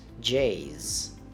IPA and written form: ʤeɪz (Jay's)